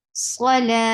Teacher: This circle ta changes into ha when it gets sukoon. Salah, you are giving temporary sukoon.